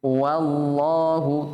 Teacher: Jadi wa-nya tetap tipis, lamnya yang tebal. Jadi saya ulang, bukan wallahu tapi wal ya.